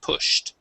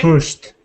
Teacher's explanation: if it ends with an SH sound, we pronounce a T